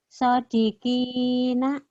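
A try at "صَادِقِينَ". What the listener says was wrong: Soalnya panjangin. Sodiqina.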